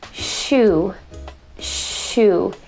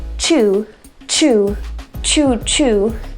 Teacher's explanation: Now the SH sound is something that I cover in method 2, but it is a continuous sound. And we don't want the CH sound to sound like the SH sound because the CH sound is not a continuous sound. So when I say the sound chew, chew, chew, chew, I can actually feel the puff of air very quickly.